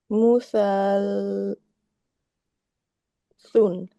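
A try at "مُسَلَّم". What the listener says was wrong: Great, but you're skipping a few sounds in the lamb. Everything goes with the lamb. So the lamb has a few things, right? Connected to what came before it, and then also complete the fatha.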